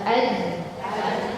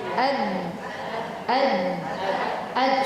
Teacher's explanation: suara langsung terhenti suara langsung tertahan ya Nah itu yang disebut dengan sifat syiddah sekarang kita bandingkan